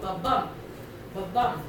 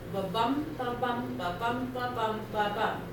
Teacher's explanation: bum is the big one, right? Ba is the littler one. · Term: stressed